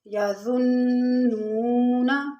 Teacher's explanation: ان کی ادائیگی میں سیٹی کی آواز بالکل نہیں آنی چاہیے، اور نون پر مشدد ہے نون، تو اس لیے اس کو تھوڑا سا یہاں پر غنہ کریں گے، اور واو ساکن اس سے پہلے پیش ہے، واو مدہ ہے، تھوڑا سا کھینچیں گے